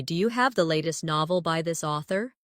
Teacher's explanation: In casual speech, do you often sounds like dia